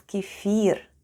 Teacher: The first sound is K, then we have E, F, I, and R. And all together it's kefir, with a stress on the last syllable. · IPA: /kyefeer/